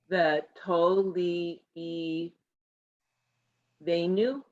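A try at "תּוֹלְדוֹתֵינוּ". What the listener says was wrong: That guttural, it's a chaf. Chenu.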